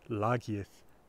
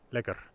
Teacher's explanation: the A in the root has been mutated, umlauted, to an E, but that hasn't happened in Gothic.